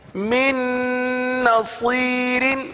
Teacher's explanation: گنہ کریں گے نون پر اور من کا جو نون ہے وہ دوسری نون میں مل جائے گا مدغم ہو جائے گا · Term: ادغام